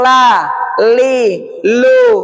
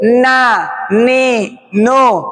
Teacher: Kalau yang la sedikit ke depan, na sedikit ke belakang.